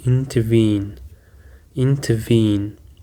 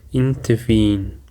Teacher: It actually contains three syllables and the stress is on the last syllable.